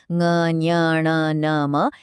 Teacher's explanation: इनको बोलकर देखिए, आवाज नाक से आती है, इसीलिए ये अनुनासिक कहलाते हैं।